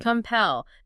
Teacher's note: Two syllables. Stress on the second.